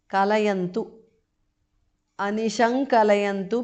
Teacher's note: anuswara changes to nga which is the nasal of the ka varga